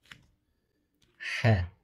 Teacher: Х әрпі айн шыққан жерден тамақтың ортасынан қысылып х деп шығады